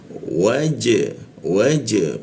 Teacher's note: Huruf ja itu dipantulkan ke arah e dia ya. Waj waj pantulkannya ke arah e.